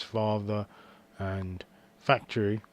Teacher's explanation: the lower lip is touching the upper teeth and that's how you make the sound